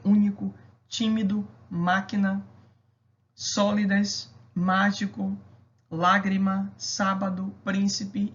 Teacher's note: todas elas são acentuadas na mesma sílaba e todas são acentuadas na antepenúltima sílaba ou seja todas são proparoxítonas